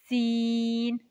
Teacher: सीन जुबान की नोक और दोनों दांतों के अंदरूनी किनारे से लगे तो सीन अदा होता है